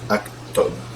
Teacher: You know, normally in Fusha it would be U, but in Ammiya, the short dhamma is just kind of an O sound. So the prototypical example of this is actually katab.